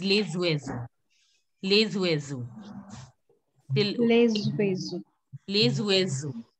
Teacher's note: S becomes Z. We link the word and it becomes lezuezo.